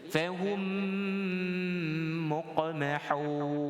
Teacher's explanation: Jadi kita dengungkan kerana yang pertama, masuknya mim tadi yang pertama tu yang mati ke dalam mim kedua pada huruf mim tasydid. Baik, jadi wajib didengung pada mim, kemudian dengan harakat 2 ataupun 1 alif